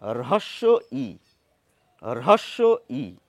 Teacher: র টা সফট নয় র এর সঙ্গে একটু হ মিশিয়ে দিতে হবে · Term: রয়ের মহাপ্রাণ ধ্বনি